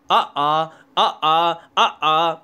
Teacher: आ का उच्चारण स्थान होता है कंठ